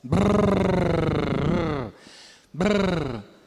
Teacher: Uma batidinha breve é simples e várias batidas é múltiplo. Tem um som que é bem raro nas línguas do mundo, que é o vibrante múltiplo bilabial. Em vez de ser no ponto alveolar, é nos lábios.